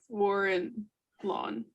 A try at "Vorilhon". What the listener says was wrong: Vol- Vaughon. The L's not really in there either.